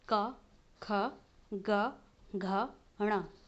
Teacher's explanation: इस क वर्ग का उच्चारण जो होता है वो कंठ से होता है।